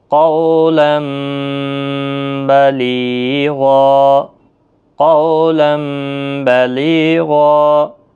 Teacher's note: نون کی آواز میم میں بدل جاتی ہے، اس کو قلب کہتے ہیں